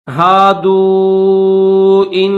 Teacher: یا ایو الذین ہادو ان، اس کو بھی کھینچیں گے، واو کے اوپر جزم بھی ہے اور چھوٹی مد بھی ہے تو اس کو تھوڑا کھینچیں گے